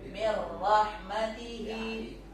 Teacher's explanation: dibaca tanpa demung, masuk ke ro tapi nggak pakai demung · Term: idgham bila gunnah